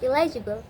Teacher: illegible because N becomes L. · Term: regressive assimilation